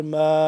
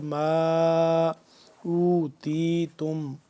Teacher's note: این یؤتی احد، حمزہ زبر احا زبر ح احا، دال دو میم پیش دم، میم ثا زیر مث، احد مثل، احد مثل ما اوتیتم، میم الف مد زبر ما، لمبا ہوگا یہ 2 سے 3 الف کے برابر